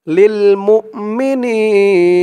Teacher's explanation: বাদ যাবে মিম হামজা পেশ মু লিল মু মি নি নি এক আলিফ টান জেরের পরে ইয়া সাকিন